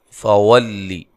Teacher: واو کو ادا کرتے ہوئے ہونٹوں کو گول کرنا ہے، لام کو باریک پڑھنا ہے